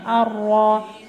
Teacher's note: ada yang membaca ro-nya tidak ditebalkan, padahal seharusnya huruf ro ditebalkannya